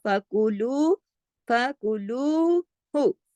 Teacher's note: लू तो खींचेगा, हु नहीं खींचेगा